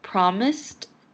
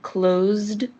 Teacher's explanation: and closed have an s before the e d ending however promised has an s sound and closed has a z sound